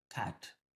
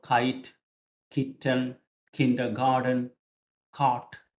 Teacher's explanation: അതായത് back of the tongue പൊന്തി മുകളിൽ തട്ടിയിട്ടാണ്